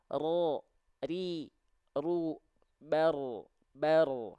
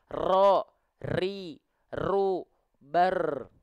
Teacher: Bergetar tapi tak terlampau berlebihan. Bergetar tapi sedikit-sedikit saja. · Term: takrir